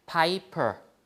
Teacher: the first p is aspirated